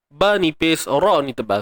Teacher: Ba nipis, ra ni tebal sebab dia baris atas. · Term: ra tebal